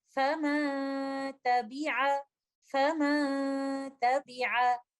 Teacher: ये एक इख्फा का लेटर है, और चूंकि लेटर ता एक लाइट लेटर है तो यहाँ पर गुन्ना भी लाइट ही होगा। तो हम नून साकिना का इख्फा करते हुए, कंप्लीट गुन्ना का इसको टाइम देते हुए, अपने गुन्ना को लाइट रखते हुए इन अल्फाज की अदायगी कुछ इस तरह से करेंगे, फमा तबिआ, फमा तबिआ।